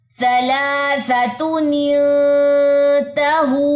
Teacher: اب نون ساکن کے بعد تا آ رہا ہے تو ہم نے یہاں پہ اخفا کیا ہے۔